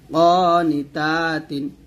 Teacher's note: ক টান দিবেন, তা টান দিবেন, নি টান দিবেন না